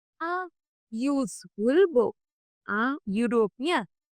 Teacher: words beginning with a vowel but pronounced as if they began with Y